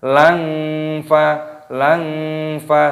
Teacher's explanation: fathah tanwin yang bertemu dengan fa, ini hukumnya dibaca ikhfa. Jadi langsung disamarkan. Lang fa seperti itu.